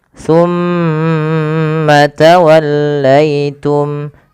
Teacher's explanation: Pada lafal summa ditahan dulu. Lafal mimnya ditahan. Jangan langsung dilepaskan.